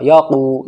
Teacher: वाव साकिन से पहले क़ाफ के ऊपर पेश है, इसलिए यहाँ पर वाव मद्द होगा, यानी वाव खिंचेगा